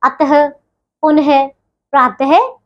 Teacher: आह को विसर्ग कहते हैं, इसका प्रयोग व्यंजन के बाद किया जाता है, इसका उच्चारण ह की तरह होता है